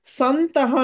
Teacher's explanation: అనుస్వారం తర్వాత త వచ్చింది కాబట్టి అనుస్వార స్థానంలో నకారం వచ్చి సంతః అవుతుంది